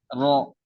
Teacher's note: Jadi ro itu kan tikror. Ya, dia itu menggerak. Jadi dia itu mengangkat ke atas.